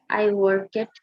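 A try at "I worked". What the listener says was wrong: ওয়ার্কেড না, ওয়ার্কড। ইডির উচ্চারণটা, ইডির উচ্চারণটা ড হবে। আই ওয়ার্কড, আই ওয়াজড, আই টকড, আই প্লেড, এনজয়েড, আই ফিনিশড, আই স্টার্টেড, ইট রেইনড বৃষ্টি হয়েছিল, আই ওপেনড আমি খুলেছিলাম।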